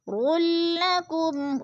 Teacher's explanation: رلکم، رلا پہ ادغام ہو رہا ہے، اور را کے اوپر 2 پیش ہیں اور ساتھ ہی لام مشدد ہے، را کو لام کے ساتھ ملا کر ادغام کریں گے